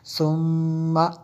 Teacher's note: سا کو دبا کے نہیں پڑھتے، آگے میم شدد ہے اس لیے غنہ کیا میں نے